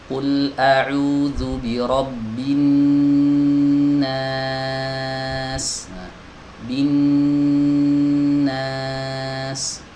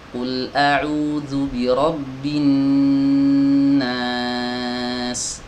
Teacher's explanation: huruf nun ini saat dia dalam keadaan bertasydid seperti ini, maka harus ditahan agak lama ya. Harus ditahan agak lama.